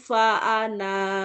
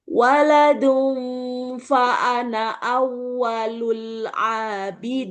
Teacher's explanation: Jika terpaksa wakaf tetap dibaca panjang satu alif.